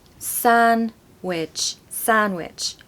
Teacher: I personally say Sam with an M, but some people say it with an N.